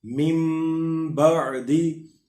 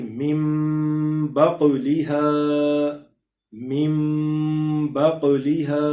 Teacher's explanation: اب یہاں پہ دیکھیں ہم نے اس کو مم بعدی کر کے پڑھا، یعنی نون ہجے کرنے میں نون آئے گا، لیکن پڑھنے میں نون کو یا نون ساکن کو یا تنوین کو ہم میم سے بدل کر اخفا کر کے پڑھیں گے، یعنی اس میں غنہ بھی کرنا پڑے گا.